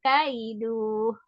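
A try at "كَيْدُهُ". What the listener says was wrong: Mau ngomong kaiduhnya nggak boleh panjang ya. Kaiduh.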